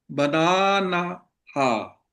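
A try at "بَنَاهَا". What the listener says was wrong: नहीं नहीं, बना हा, एक ही नून है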